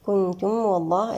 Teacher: كنتم والله، الميم مع الواو هن إظهارا شفويا، والعلاقة بين الميم والواو هنا تجانس.